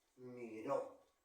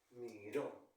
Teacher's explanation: es una palabra aguda porque la mayor fuerza va ser final y se va a colocar la tilda de la vocal debido